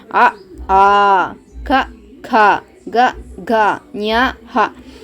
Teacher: ನೀವೇ ಉಚ್ಚಾರ ಮಾಡಿ ನೋಡಿ ಇದು ಕಂಠದಿಂದ ಸ್ಟಾರ್ಟ್ ಆಗುತ್ತೆ ಅದಕ್ಕೆ ಇದನ್ನ ಕಂಠ್ಯ ವರ್ಣಗಳು ಅಂತೀವಿ